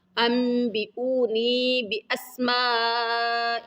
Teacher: اقلاب کا، اقلاب والا ہم نے پڑھا تھا، نون ساکن کے بعد اگر با آ جائے، نون ساکن کے بعد اگر با آ جائے تو وہاں نون کو میم میں بدل دیتے ہیں